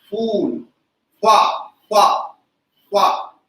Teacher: जिसको हम बोलते हैं दंतोष्ठ, दांत के साथ ओठ मिलकर उच्चरित हो रहा है, इसलिए यह ध्वनि कहलाएगी दंतोष्ठ।